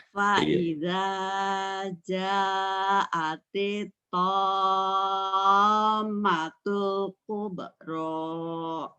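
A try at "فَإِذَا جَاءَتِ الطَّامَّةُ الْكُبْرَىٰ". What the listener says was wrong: Udah, tapi belum nyamber ke mimnya. Faida ja'atil tom tom karena mimnya juga gunnah. Wa idza ja'atil tammatul kubra lagi.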